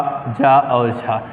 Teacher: इन चारों वर्णों को क्या कहा जाता है? स्पर्श संघर्षी व्यंजन कहा जाता है।